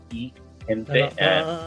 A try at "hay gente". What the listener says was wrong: No, not E. Okay, you have to pronounce I. Yeah, remember in Spanish, you have to pronounce every vowel.